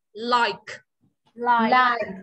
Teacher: Lờ đầu lưỡi chân răng, ca bật ra nhá.